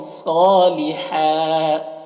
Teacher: دو زبر پر جب وقف کرتے ہیں تو ایک زبر کے ساتھ الف پڑھتے ہیں